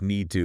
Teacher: often reducing to just need to like the t almost disappears